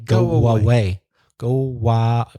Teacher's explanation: We're putting in like an extra w sound between the O of go and the A of away.